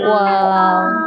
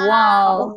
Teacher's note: দুই ঠোঁট গোল করিয়া ওয়া, তিন আলিফ টেনে আমরা পড়ব। দুই ঠোঁট গোল করিয়া তিন আলিফটা নিয়ে আমরা উচ্চারণ করব